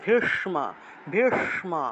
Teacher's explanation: ভীষ্ম জিউভা উল্টিয়ে স উচ্চারণ করতে হয় মূর্ধন্য স্ব এর উচ্চারণ মূর্ধন্য স্ব এর উচ্চারণ হলো জিহভা উল্টিয়ে স উচ্চারণ